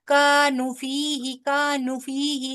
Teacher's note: نو کو بھی پورا واؤ مدہ پوری کریے نا